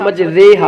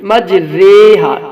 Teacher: امالہ کا مطلب ہوتا ہے مائل کرنا، الف کو یا اور فتح کو کسرہ کی طرف مائل کر کے پڑھنے کو امالہ کہتے ہیں